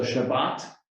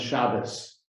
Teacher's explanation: a t at the end often becomes an s so shabbat in hebrew becomes shabbos or